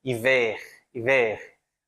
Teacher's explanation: eu vou pronunciar também o R, meio gutural aqui, né? Hiver, hiver, aquele R da garganta, né?